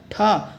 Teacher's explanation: ठा मूर्धन्य महाप्राण अघोष व्यंजन का उदाहरण है